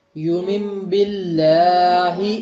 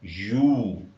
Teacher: یہ واو معروف کی آدھی آواز نہیں تھی بلکہ پوری آواز تھی۔ یو، تو اس کو پوری آواز کے ساتھ پڑھیے۔